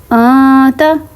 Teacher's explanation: آتا for example اب دیکھیں آتا، اب جو نون ساکن کی آواز میں نے انتا نہیں نکالی، آتا ناک میں تو میں آواز لے کے گئی ہوں لیکن میں نے زبان ہوا میں رکھی ہے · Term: اخفا